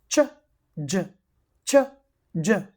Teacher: You can hear that I stop the air but when I release the air I make the air passage narrow. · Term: africate consonants